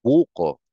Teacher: So nandun sa bu yung stress. Yun ang nakaka-receive ng more sound, no?